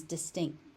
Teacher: Sometimes that final T gets unaspirated into oblivion and just becomes distinct.